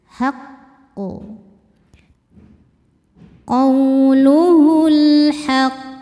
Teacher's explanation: Karena ada huruf qalqalah yaitu qof yang sukunnya ini karena berhenti. Maka qof kita pantulkan dengan pantulan yang besar. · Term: qalqalah kubro, qalqalah kubra